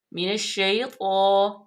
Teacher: یا سے پہلے اگر زبر ہو تو یائے لین ہو جاتے، اس کو لمبا نہیں کرتے بلکہ نرمی سے پڑھتے ہیں · اس کی الف لام جو ہے وہ ساکن ہو جائے گی، نون کو ڈائریکٹ شین میں ملائیں گے